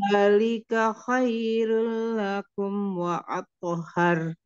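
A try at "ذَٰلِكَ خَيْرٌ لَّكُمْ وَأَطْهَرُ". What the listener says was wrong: Khairul, disempurnakan dulu lam tasdidnya bunda. Jangan kelamaan nahannya. Khairul lakum.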